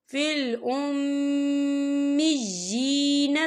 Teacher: یہاں میم مشدد ہے، تو یہاں پر غنہ ہوگا، اور جی یا کے نیچے کھڑی حرکات ہے، تو ہم اسے 2 یا 3 حرکت کے برابر کھینچ کے پڑھیں گے۔